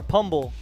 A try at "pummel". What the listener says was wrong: It's called pummel. The B is silent, dude. Yeah, just pummel.